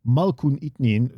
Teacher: notice that you lose the extended vowel on Malkûn, by the way, because there's already an extended vowel in the word Itnin